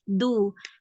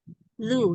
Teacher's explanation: Ee itu ana dengarnya masih du biasanya karena ujung lidahnya kurang keluar sedikit untuk makhraj dal